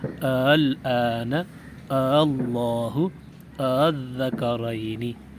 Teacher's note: ان کلمات کو 2 حمزوں سے پڑھیں، لیکن دوسرے حمزے کو کچھ نرمی کے ساتھ پڑھیں